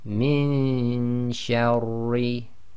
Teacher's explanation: So it's noon sakin followed by one of the other 15 letters, so it's ikhfa. So we're going to do the ghunna with the hiding of the noon, i.e. getting our tongue ready in the next articulation point